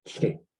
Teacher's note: doesn't have a high tone, so you just stay low